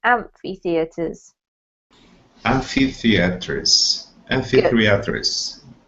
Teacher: So there's two sort of separate emphasis points on this word. There's amph in amphi and the in theaters.